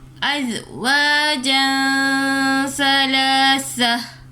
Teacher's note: Tanwin bertemu dengan sa adalah ihfa hakiki. Jadi kita baca dengung